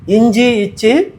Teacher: நாவின் இடையில் அன்னத்தை இடையில் தொடுவது